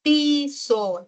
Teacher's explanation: nuestra I tiende a ser no redondeada